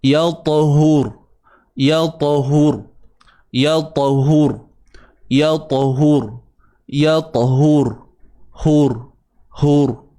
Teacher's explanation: Matikan ra pula. Ra ni kena tebal sebab apa? Ni ra mati sebelumnya baris depan. Jangan hur.